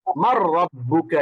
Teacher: নুন সাকিনের পরে যদি র আসে তাহলে নুনটা না পড়ে রকে সরাসরি ধরে ফেলে। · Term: ইদগাম